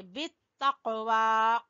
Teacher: बा को ता से मिलाएंगे और ता को कौफ से, बित्तक़वा, कौफ के ऊपर हल्का कलकला करेंगे।